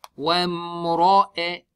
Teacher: You smile on both of them, waw and meem, and then you don't smile in the ra. Why? The rule of ra is ra has a fatha or dhamma, it is thick.